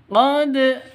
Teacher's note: qod ini harus dipantulkan karena huruf Qalqalah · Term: qqalah sugro, qalqalah sughra